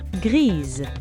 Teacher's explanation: The S here is pronounced like a Z. This is a pronunciation rule that applies when the letter S appears between vowels [music] for most French words.